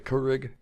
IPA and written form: ˈkjʊərɪɡ (Keurig)